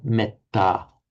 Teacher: the word metta in Pali, you hear a short eh there